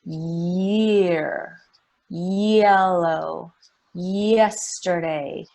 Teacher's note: It's just like my tongue moves up Yeah, and it glides down During the sound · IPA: /j/